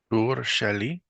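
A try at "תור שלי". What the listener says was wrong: why do you say it like a question? Go ahead. Let's say it like a statement, right? Usually questions and statements are differentiated in Hebrew by inflection of the voice, how you set, like your tone. So let's say it like a statement.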